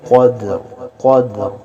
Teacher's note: انا انزلناہ فی لیلۃ القدر، قوف کو موٹا پڑھیں گے، حروف مستعلیہ میں سے ہے، موٹے حروف میں سے ہے قدر، اور دال پہ قلقلہ ہوگا، آواز کو ظاہر کریں گے قدر قدر، اور را کو بھی موٹا پڑھیں گے قدر۔